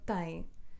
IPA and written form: tɐ̃j̃ (tem)